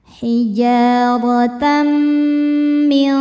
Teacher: Karena tanwin fathah menghadapi mim, maka tanwin masuk ke mim. Kemudian dengungkan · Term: idghamhunah